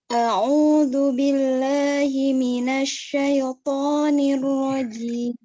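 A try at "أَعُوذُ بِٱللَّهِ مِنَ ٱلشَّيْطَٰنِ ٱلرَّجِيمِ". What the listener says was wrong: Zu, jangan kedengaran kayak dal. A'udzu billah.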